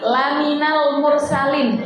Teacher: lamnya itu pendek kalau dipanjangkan sudah beda arti jadi lamnya itu pendek